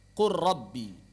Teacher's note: sebagian ulama menilai lam bertemu dengan ro itu berasal dari satu makhraj yang sama. Sangat dekat sekali. · Qur rabbi tidak dibaca qul rabbi. Kenapa? Karena berat.